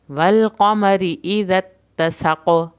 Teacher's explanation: اوپر شد ہے اس کے ساتھ ملے گا، والقمر اذا اتسق سین کو سیٹی کی آواز کے ساتھ پڑھ کے قاف پہ خوب کلکلا کرنا ہے